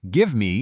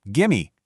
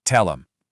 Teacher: We are entirely dropping those hard ending consonant sounds of the first word.